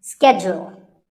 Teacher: It's not so much that it's mispronounced, it's just that it's said differently in the UK and in the US. In American English, this is schedule. The first syllable is ske and the second is jewel.